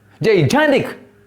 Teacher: you have to give stress or force while pronouncing on the second syllable. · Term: stressed syllable